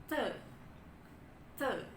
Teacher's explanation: dia stop karena ada aliran udara yang terhambat di mulut